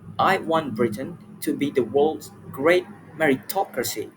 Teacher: In that word meritocracy, she clearly stressed the syllable me